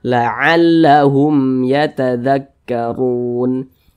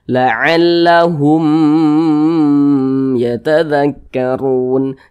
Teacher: Pokoknya selain daripada huruf ba dan huruf mim, maka semua hukumnya namanya izhar syafawi. Karena dia izhar, maka dibaca jelas, dia tidak berdengung. Jadi ini dibaca pendek saja.